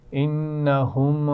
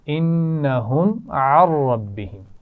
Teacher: میم کی آواز پہ قلقلے جیسی آواز نہیں آنی چاہیے